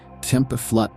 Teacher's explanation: Then the consonants, whisper kaya, a soft hiss near the palate